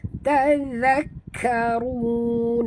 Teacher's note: huruf zal jaga ya, dan jut ataupun tekan pada kaf kerana di atas kaf ada tasydid · Ra sini kena baca tebal. Ra baris depan ataupun ra dhammah ini kita kena tebal